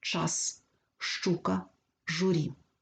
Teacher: в українській мові шиплячі вимовляються твердо